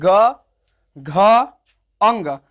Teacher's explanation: वैसा वर्ण जिसका उच्चारण करते समय गले में कंपन या गुंज से उत्पन्न होती है · आपके गला में क्या होगा कंपन होगा कंपन या गुंज जरूर उत्पन्न होगा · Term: घोष वर्ण, घोष